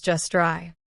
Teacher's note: The T is silent because it's between consonants.